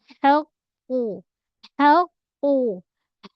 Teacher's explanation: Ha pada setengah kerongkong